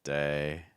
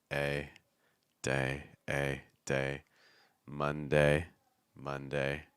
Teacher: we want to make sure that we're not tensing that dip thong too much at the end